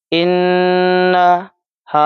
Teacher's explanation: اس ہا کو ہم 3 الف کے برابر کھینچیں گے، اور لا اس کو 5 الف کے برابر کھینچ کر پڑھیں گے۔